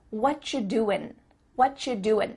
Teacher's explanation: the end of the word doing that g also gets cut out